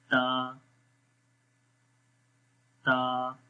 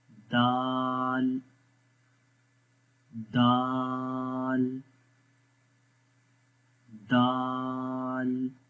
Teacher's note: تا اور دال کے اندر زبان ایک جیسی رہتی ہے، کیونکہ دونوں حروف کو ہم باریک پڑھتے ہیں، یعنی کہ موٹا نہیں پڑھتے.